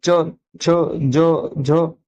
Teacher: ऊपर जो होता है तालू होता है अगर हम इसको बोलेंगे च छ ज झ तालू प लग रही है हमारी जी तो च वर्ग जितना भी है वो तालब या तालू इनका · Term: तालव्य